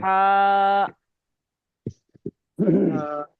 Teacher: এই হাটা, এটা হবে গলার মাঝখান থেকে, এরকম হবে হ্যাঁ হা। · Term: ছোট হা